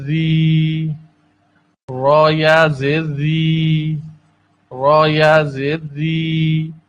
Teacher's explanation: را زیر کے ساتھ باریک پڑھا جاتا ہے